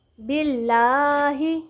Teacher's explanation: جلالت اللہ کے لام سے پہلے با کے نیچے زیر ہے تو ہم اس کو باریک پڑھیں گے